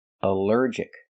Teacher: Here the al is not pronounced all but pronounced uh like in cup and up because it's not stressed.